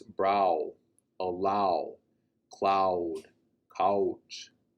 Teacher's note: the lakota dipthong with the ah and the o coming together